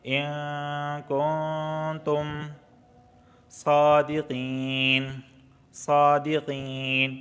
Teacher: یا ساکن سے پہلے زیر آیا ہے قاف کے نیچے، تو یہاں پر اس کو کھینچیں گے مدہ ہونے کی وجہ سے